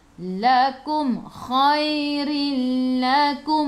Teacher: Lam ada sabdu. Idgham bila gunnah. Masuk tanpa dengung.